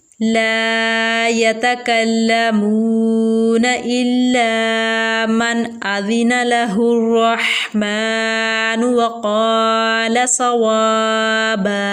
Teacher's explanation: मीम के ऊपर खड़ी हरकत है, एक अलिफ के बराबर खींच के पढ़ेंगे। अलिफ से पहले क़ाफ के ऊपर ज़बर है, अलिफ मद्दा का कायदा इस्तेमाल होगा और क़ाफ को हम पुर यानी मोटा करके पढ़ेंगे · नून साकिन के बाद हमज़ा हरूफ हल्की में से है तो यहाँ पर इजहार का कायदा होगा, यानी गुन्ना नहीं करेंगे। रवा के ऊपर ज़बर है तो यहाँ पर हम इस रवा को मोटा यानी पुर पढ़ेंगे। हा जो है हलक के दरमियान वाले हिस्से से आवाज़ निकालेंगे इसकी। · काफ को हम बारीक पढ़ेंगे। वाव साकिन से पहले मीम के ऊपर पेश है, वाव मद्दा होगा।